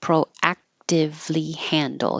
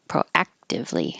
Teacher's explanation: You won't hear that K.